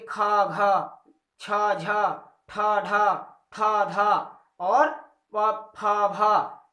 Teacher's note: जिन वर्णों के उच्चारण में श्वास वायु अल्प प्राण की तुलना में बहुत कुछ अधिक निकलती है और ध्वनि हा उसे हा की तरह निकलती है, उसे महाप्राण कहते हैं।